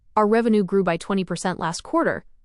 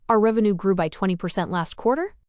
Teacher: Even though they are stating a hard fact, the upward pitch turn makes it sound like a question, it sounds like they are subconsciously begging the audience for permission and asking, "Is that okay?